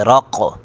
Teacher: قاف ساکن پر قلقلہ کریں گے